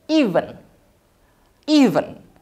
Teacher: dia petiknya di depan. Di I, jadi kita harus menekankan di I-nya. Jadi nadanya dari naik ke turun.